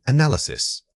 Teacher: The stress shifts and we add an extra weak vowel